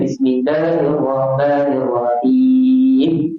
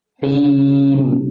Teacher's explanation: Hi yang panjang, bukan mim yang panjang.